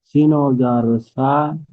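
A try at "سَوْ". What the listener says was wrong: সিন ওয়াউ জাবার সাউ, সা নয়, সিন ওয়াউ জাবার সাউ।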